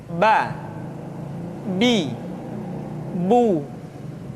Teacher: Huruf Ba dikeluarkan dengan cara merapatkan kedua bibir kita.